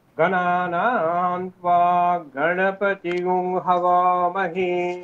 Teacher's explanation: শুক্ল যজুর্বেদ পড়তে গেলে অনুদাত্ত স্বর আমরা গলায় দেব না, সমস্বরে পড়ে যাব